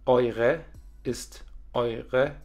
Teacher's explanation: Eure ist eure mit dem E-Schwa am Ende